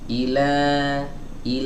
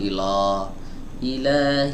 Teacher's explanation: Dipanjangkan ya beberapa saat baru pindah ke harakat fathah. Nah, harakat fathah di sini harus dibaca tipis, jangan dibaca tebal atau mengarah ke arah tebal gitu. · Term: fathah yang tipis